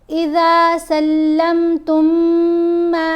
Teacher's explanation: غنہ کرتے ہوئے میم کو ملانا ہے، میم کو 3 الف جتنا لمبا پڑھنا ہے